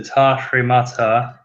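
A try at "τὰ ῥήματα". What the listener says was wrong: Now you don't have to pronounce the rough breathing mark. Yeah, not over a row. A row always has a rough breathing mark, but you don't pronounce it. Ta remata.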